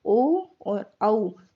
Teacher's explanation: ओ और औ कंठ ओष्ठ्य कहलाते हैं, जो कि कंठ और होठ दोनों से मिलकर बने हुए होते हैं।